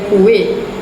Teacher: berlakunya penyisipan geluncuran W di antara huruf vokal U dan I, menjadikan perkataan tersebut disebut sebagai kuih.